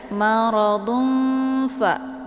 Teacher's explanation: Jadi disamarkan tanwinnya ya, bukan dun ya. Jadi enggak ada bunyi n-nya. Bunyi n-nya itu disamarkan. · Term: ikhfa